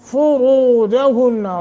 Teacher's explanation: را کو موٹا فا کے اوپر زمہ ہے اور نون غنہ کے ساتھ پڑھیں گے